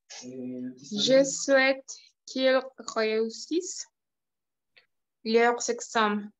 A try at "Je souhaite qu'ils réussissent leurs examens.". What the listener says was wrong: Exact. Très bien. Parfait. Excellent. Très bien. Qu'ils réussissent. Parfait.